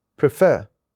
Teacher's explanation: As you can see, we have two syllables in this word, prefer. The second syllable, which is fer, is stressed.